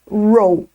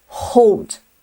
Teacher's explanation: Roll é com esse R mais do interior. Roll. Hold é esse R arranhado.